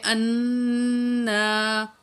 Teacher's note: حمزہ کو نون سے ملائیں گے اور نون میں غنہ کریں گے